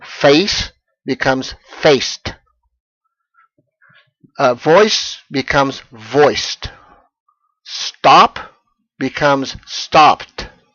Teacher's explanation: So the spelling and any spelling changes don't matter. If the final sound is an unvoiced consonant like face or voice or stop or replace, then you're going to pronounce the ed as simply a hard t sound. No vowel at all. · you're going to pronounce the ed as simply a hard t sound. No vowel at all. Simply t. So face becomes faced.